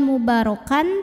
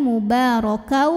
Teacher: maka tanwin fathah lebur ke huruf wau disertai dengung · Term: Idgham Bighunnah